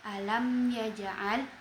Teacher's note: mim sukun bertemu dengan huruf ya. Hukum tajwidnya adalah izhar syafawi. Mimnya dibaca dengan jelas.